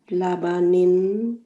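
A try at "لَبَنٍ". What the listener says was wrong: थोड़ा सा नून की आवाज निकालें. ला नहीं बोलें. ल ल लबानिन.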